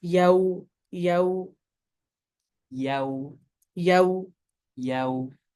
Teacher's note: you're starting with a fatha and you're coming towards a wow. So your mouth looks literally like yo from a to ow.